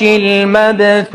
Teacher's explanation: وشنو حكم الثاء في المبثوث؟ حكمها الهمس.